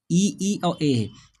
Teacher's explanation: जीभ के अगले भाग से बोले जाने वाले स्वर को अग्र स्वर कहते हैं